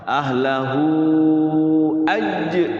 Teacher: Nah ini namanya mad silah tawilah panjang 6 harokat.